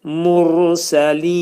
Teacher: Burada ləminəl dedikdə ləmin demək ki, məxrəcini saxlayırıq, yumuşaq şəkildə deyirik. Ləminəl mur dedikdə ra hərfi qalın oxunur.